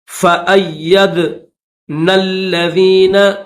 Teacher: دال حروف قلقلہ میں سے تو اس کو ظاہر کر کے پڑھیں گے. فأیدنا الذین, نون کو لام کے ساتھ ملائیں گے.